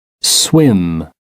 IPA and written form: swɪm (swim)